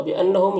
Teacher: یہاں پر نون مشدد غنہ ہوگا، میم میں اظہار شفوی ہوگا